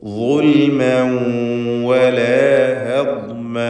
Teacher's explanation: ഗുൽമൻ എന്നതിലെ തൻവീനിനെ ഇദ്ഗാം ബിഗുന്ന നാഖിസ് നൽകി വാവിലേക്ക് ലയിപ്പിച്ച് മണിക്കണം